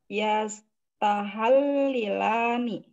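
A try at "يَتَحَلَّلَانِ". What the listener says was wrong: Yatahallalani. Jangan dirubah barisnya.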